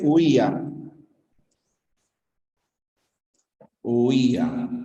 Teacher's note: En la palabra huía aparecen los dos. Diptongo, la U con la I, y hiato acentual, la I con la A. · Pero tienes una cerrada con una abierta. Y la cerrada lleva fuerza de voz. Huía. Por lo tanto, cerrada con abierta, cerrada con fuerza de voz, obligatoriamente con tilde.